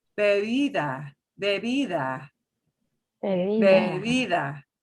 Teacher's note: We've got the word for drink. The first B is going to be a little more forceful. The second B is between two vowels. It'll go super, super soft.